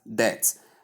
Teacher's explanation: When you spell it, we have it as D-E-B-T. B is included in the spelling, but it is completely removed in the pronunciation. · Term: silent letter B